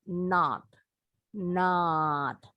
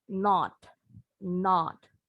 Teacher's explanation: kalau dalam American English ini bunyi gabungan antara o dengan A jadi O nya nggak monyong tapi lebar kalau orang Inggris ini bunyinya agak bulet ya jadi Mereka bilangnya nol nol bulat kalau orang Amerika not not